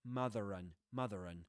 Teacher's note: when there's a word ending with a letter R and the next word begins with a vowel sound, usually they produce what's called a linking ra. So a ra that connects both vowel sounds.